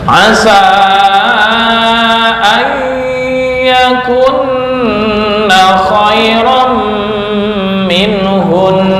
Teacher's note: Asa yakunna khairum minhum. Nah, ada nun yang bertasdid, ini ditahan 2 ketukan, 2 sampai 3 ketukan